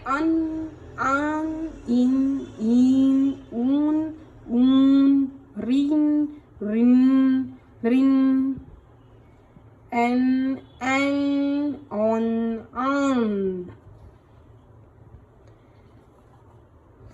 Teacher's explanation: मुखेन सह नासिकया अपि उच्चारिताः स्वराः अनुनासिक स्वराः भवन्ति। मतलब मुख के साथ नासिकया नासिका से अपि मतलब भी उच्चारिताः उच्चारित होने वाले स्वर को अनुनासिक स्वर उच्चारित होने वाले स्वर अनुनासिक स्वर होते हैं।